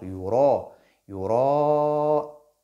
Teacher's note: sans oublier que yura ici est emphatique, donc est mufakham. Et la prolongation doit suivre la lettre ra dans l'emphase. Donc yura, yura, et non yura, non.